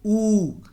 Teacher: अगर आप ऊ का उच्चारण करेंगे ना, करिएगा, थोड़ा समय दीजिएगा, ऊ बोलेंगे तो आपके होंठ जो हैं आगे की तरफ आ जाएंगे, ऊ। तो ऊ का उच्चारण स्थान याद करने के लिए आपको कोई प्रॉब्लम नहीं है, परेशानी नहीं है। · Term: ओष्ठ